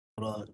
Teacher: Hujung belakang lidah, dan bila kita getarkan, dia bunyi dia tebal. Dan kadang pangkal lidah pun naik juga untuk bagi tebal.